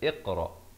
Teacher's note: Hamzah washal dibaca kasroh jadi kita baca Iqro jangan baca aqro ataupun uqro tapi baca Iqro